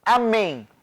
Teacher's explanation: é uma oxítona a última sílaba é mais forte